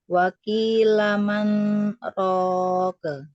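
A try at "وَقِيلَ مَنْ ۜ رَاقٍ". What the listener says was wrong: Waqilaman, nun sukunnya diperjelas Ibu ya, jangan disamarkan, jangan disamar-samarin ya. Waqilaman, ya, coba ulangi.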